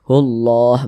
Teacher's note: lamah kita lihat di samping hukumnya adalah alif lam syamsiahah sehingganya huruf lamnya ini dibaca idgham dari Hu langsung ke huruf lam ini